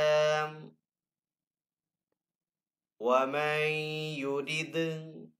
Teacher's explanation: دال حروف کلکلہ میں سے تو دال کے اوپر یہاں پہ کلکلہ کریں گے